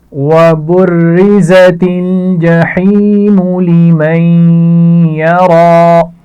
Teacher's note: آخر میں را کھڑی زبر کے ساتھ ہے تو اس کو موٹا پڑھا جائے گا